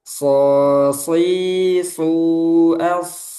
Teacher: Huruf sod. Tebal. Dan juga ada sifat sofir.